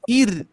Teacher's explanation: Kalau misalkan sebelumnya kasroh, terus di sini ro-nya sukun, maka dibaca tipis.